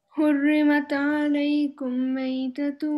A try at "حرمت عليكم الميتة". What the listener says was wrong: عليكم. You have to join here. You have a. We have a hamzat wasl Before it, we have mim sukun. Okay, mim alaykum. We have mim sukun.